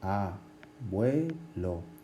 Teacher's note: tenemos una U, que es cerrada, más E, que es abierta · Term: diptongo